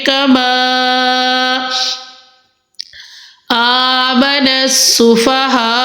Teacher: ہم پڑھیں گے کما آمن السفہاء، جی الف پہ کھڑی حرکات ہے، تو ہم ادھر حمزہ کو 1 الف کی مقدار میں لمبا کریں گے اور ادھر الف مدہ کا قاعدہ ہے اور مد کا قاعدہ ہے، ادھر ٹوٹل ہم ہا کو تقریباً 4 الف کی مقدار میں لمبا کریں گے۔